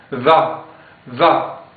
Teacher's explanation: c'est une interdentale on doit mettre la langue entre les les dents